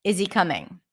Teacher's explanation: I want to connect the words and to help me do that I drop the H